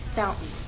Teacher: when I say the word fountain I'm using a glottal stop